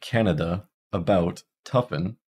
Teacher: this is the mid Central unrounded reduced vowel so we don't call this LAX or tense we call it reduced · Pretty much whenever we have an unstressed syllable, we hear a schwa. And this is the mid-central unrounded reduced vowel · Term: schah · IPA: [ə]